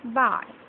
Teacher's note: Closing diphthong glides from the front open position towards I. The lips change from a neutral to a loosely spread position. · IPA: /ai/